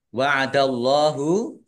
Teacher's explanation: Allahnya dibaca tebal karena harokat di depannya fathah. Lam fathah berdiri, mat tobi'i, panjang dua harokat.